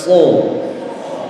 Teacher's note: tempat keluarnya huruf SH ujung lidah ditemukan dengan ujung gigi seri bagian bawah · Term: huruf Shad